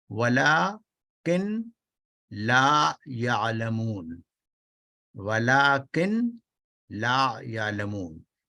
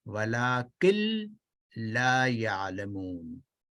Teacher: نون کی بالکل ساؤنڈ بالکل نہیں آئے گی 100%